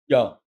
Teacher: યતિ નો ય બોલશો ને એટલે તમારી જીભ તાળવે લાગશે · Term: તાલવ્ય